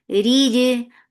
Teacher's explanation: Jim will get sifa qalqala, and this qalqala is very clear, should be very crisp.